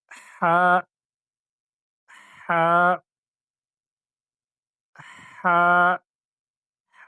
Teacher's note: ادا ہوتا ہے گلے کے اس حصے سے جو منہ کی طرف ہے، وہاں سے ہا ادا ہوتا ہے نرمی کے ساتھ۔ یہاں پر جیم کے درمیان میں نقطہ ہے تو یہ جیم ہے، اور یہاں پر کوئی نقطہ نہیں ہے تو اس کو ہم ہا پڑھیں گے۔